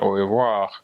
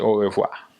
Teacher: In French we have the R. You can hear the R at the end, au revoir. But in Creole we say au revoir without it.